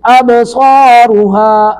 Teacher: یا پھر واجفتن ابصارها، تن پر اظہار کریں گے، تن ابصارها، اب با ساکن پہ قلقلہ ہو رہا ہے